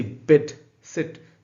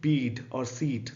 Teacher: ये ई साउंड की तरह ही निकलना चाहिए, इसको आप लॉन्ग नहीं कर सकते हो.